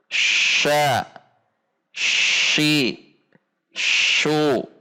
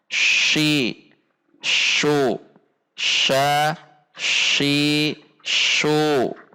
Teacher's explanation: Seperti contoh, letakkan posisi lidah kita pada titik makhraj shin, kemudian ucapkan sya, shi, shu. Ada dorongan udara yang kuat. Sha didorong. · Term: al-mahmus